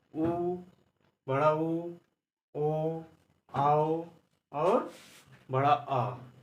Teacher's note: और जो पश्च स्वर हैं, तो ये वो जीवा के पिछले भाग से उत्पन्न होते हैं।